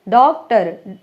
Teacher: डॉक्टर ना तो ऊ की मात्रा है ना आ की मात्रा उसके बीच का स्वर लिया हुआ है। तो इस तरह से ये अर्ध विवृत हो गए। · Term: आगत ध्वनि